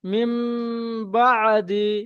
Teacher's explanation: যেহেতু নুন সাকিনের পরে বা এসেছে, তাই নুন সাকিনটা মিমের দ্বারা পরিবর্তন করে পড়তে হবে। এখানে নুনটা পরিবর্তন হচ্ছে মিমের সাথে, ঠিক আছে ভাই? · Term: ইকালাব